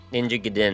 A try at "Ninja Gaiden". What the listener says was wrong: You put the emphasis on the wrong syllable.